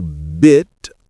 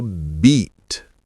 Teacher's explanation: Short and relaxed for bit. long and tense for beat.